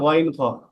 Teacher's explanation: তিন নাম্বার মাখরাজ হলকের শেষ হইতে গাইন খ